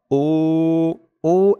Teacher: এক আলিফ টান পেশের পরে ওয়াও সাকিন